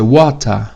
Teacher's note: o inglês britânico, o R no final não é pronunciado, tá? Então, água em inglês britânico vai ser water.